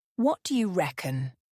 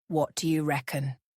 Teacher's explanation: The question often has a rising intonation at the end.